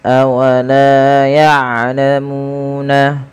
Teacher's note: panjangkan huruf lam sepanjang 2 harakat dan huruf mu sepanjang 2 harakat karena kedua bacaan ini adalah mad tabi'i